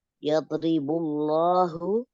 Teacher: ro-nya tarkik tipis karena berharokat kasroh. Kemudian bullahu, lamnya lam lafaz jalalah tafkhim 2 harokat.